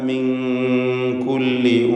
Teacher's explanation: സക്കിനത്താനൂൻ ശേഷം കാഫ് മിൻ കുല്ലി ഇഖ്ഫ ഹഖീഖി നൽകി മറച്ച് മണിച്ച് ഉച്ചരിക്കണം.